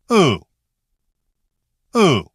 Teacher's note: Short and slightly rounded. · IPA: /ʊ/